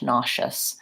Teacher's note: So that's an ah, nauseous, and a unstressed schwa, nauseous. And the S in this case is the SH sound